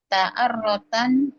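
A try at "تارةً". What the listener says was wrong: panjang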